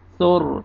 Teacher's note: را کو پر کریں گے سر، کیونکہ را ساکن سے پہلے پیش ہے